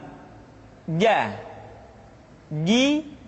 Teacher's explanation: huruf ja dikeluarkan dengan menyentuhkan tengah-tengah lidah dengan langit-langit